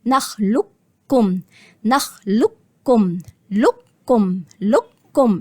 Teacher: يا إما ليها طريقتين، إدغام كامل وده هو المقدم، يعني هخش من اللام المضمومة على الكاف المشددة